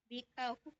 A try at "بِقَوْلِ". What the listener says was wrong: Bikau berarti huruf kaf dong. Huruf kaf apa kop pakainya? Ah, coba kalau kop gimana bunyinya?